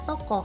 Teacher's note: vokal o Tengah atas belakang bundar